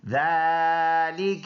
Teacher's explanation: ذالک ایک الف کے اندازے سے اس کو لمبا ادا کریں گے چھوٹا کاف ہے اور اس کو کاف کو لام کے ساتھ ملائیں گے.